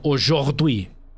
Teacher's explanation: But a lot of people around here who don't speak French naturally will say aujourd'hui, and they'll roll their R for that. But the French roll their R's in the back, and we roll our R's in the front. So instead of aujourd'hui, it's more aujourd'hui.